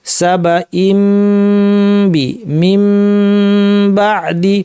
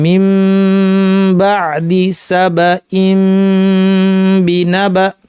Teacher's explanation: মিম থেকে বাতে আমরা শিফট করে চলে গেলাম, মাখরাজকে নতুন করে আমরা প্রস্তুত করিনি। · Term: মিমকে ইখফা করা